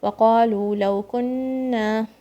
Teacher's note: Nun shadda, this is strong gunna.